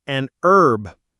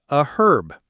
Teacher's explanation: So, Americans say an herb. But in many British accents, the H is pronounced. So, they say a herb. · In American English, the H in herb is often silent, so Americans say an herb.